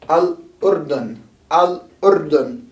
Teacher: even though this is supposed to be a flapped R, it often gets sort of trilled when you try and say Al-Urdun